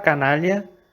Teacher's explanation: en la palabra canalla, la letra A antes de la letra N tiene sonido de A abierta, porque es la sílaba tónica